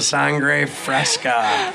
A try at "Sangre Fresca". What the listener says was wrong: Sounds like you're saying sangria. fresca.